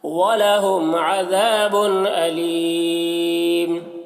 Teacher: وَلَهُمْ میم میں اظہار شفوی ہوگا، ذال کو باریک پڑھیں گے اور الف مدہ ہے.